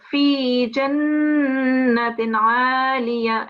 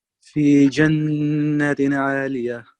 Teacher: it's not just 1 second, it's 2 seconds. We've got ya madda here.